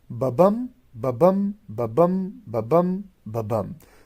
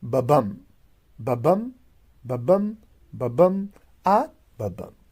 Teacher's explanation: So the number of feet will be 5, and in each foot we will have 2 syllables. And the first syllable will be unstressed and the second will be stressed. So total number of syllable 10 and total number of feet 5. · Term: iambic